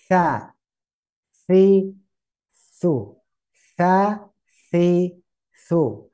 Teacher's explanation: jadi ujung lidah ke ujung gigi · Ujung lidah rapat ke ujung gigi. Ya, mendekat ke ujung gigi seri atas.